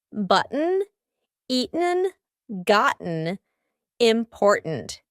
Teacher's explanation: Do you notice that my throat is stopping that T sound in the middle of the word? · my throat is doing some important work here to make that glottal T sound exactly the way it should